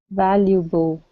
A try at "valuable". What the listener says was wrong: Okay, now at the very ending of the word, you're pronouncing an oo, saying valuable. Okay, instead of boo with an oo sound for the L, use your tongue to pronounce the L. Valuable. Valuable.